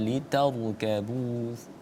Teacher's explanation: ketika didahului dengan huruf yang kemudian berharokat fathah, maka hukum bacaannya adalah tafkhim, harus dibaca tebal